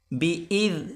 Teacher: ہلکی سی زبان باہر نکال کر پڑھیں گے ذال کو پڑھتے وقت